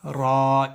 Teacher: ज़बान की नोक कमर की तरफ ऊपर के तालों से मिलकर अदा होता है